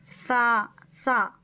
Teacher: زبان کی نوک اوپر کے 2 دانت کے کنارے میں لگانے سے سا ادا ہوتا